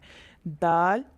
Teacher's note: ضاد اس کا مخرج زبان کا کنارہ اور اوپر کی داڑھوں کی جڑ ہے۔ دال اس کا مخرج زبان کی نوک اور آگے کے دانتوں کی اوپر مسوڑوں کے ساتھ جب زبان لگتی ہے تو دال ادا ہوتا ہے